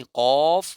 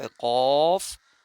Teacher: इनमें सबसे बड़ा फर्क यह है कि मखरज कौफ जो है यह मोटा पढ़ा जाता है। यानी कौफ हरफ काफ कौफ यह मोटा पढ़ा जाता है और काफ यह बारीक पढ़ा जाता है।